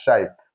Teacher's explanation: So this place here, we have this alif and lam here. So for alif and lam, we won't be pronouncing it. So it will not be like minal shaitor, that is wrong. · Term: hurufu shamsiya